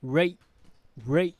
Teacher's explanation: We don't pronounce the T from the word rate.